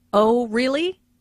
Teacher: Notice the rising intonation on “really.” This shows that the speaker is surprised.